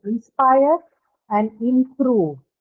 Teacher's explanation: just like inspire, again in improve, the stress is on the second syllable because both of them are verbs, right?